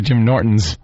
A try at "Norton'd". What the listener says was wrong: It's Norton with a capital D at the end and an apostrophe, and it just stops.